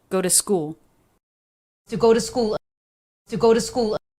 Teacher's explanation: the second word two totally reduced flap t